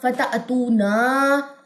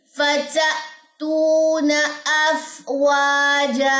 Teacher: نون کی زبر کو لمبا اکثر لوگ کر دیتے ہیں نا, فتأتونا, تو یہ غلط ہوگا.